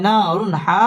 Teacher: হরফ এক আলিফ টেনে পড়তে হবে না রুন র পুর হবে রুন তানবিনের বামে হা হা ইজহারে হরফ গুন্না ছাড়া স্পষ্ট করে পড়তে হবে